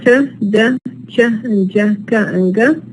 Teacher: these are characterized by blocking the air completely and then releasing it, stopping the air completely and then releasing it. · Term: minus continuant